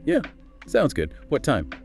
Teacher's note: Enthusiastic agreement, followed by a clear short question, maybe rising intonation on time.